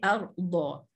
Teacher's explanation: Okey, dha seperti yang mana saya terangkan tadi, dha ialah makhraj daripada sepanjang tepi lidah menemui geraham atas kiri atau kanan